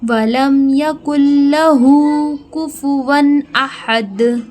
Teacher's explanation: لہو ہا کے اوپر کھڑا زبر ہے، یعنی ہا کو ایک الف کے برابر کھینچیں گے